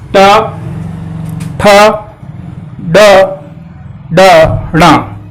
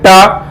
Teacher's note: जैसे टा हम बोले तो जबान का अगला भाग हमारा मुड़ रहा है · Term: मूर्धन्य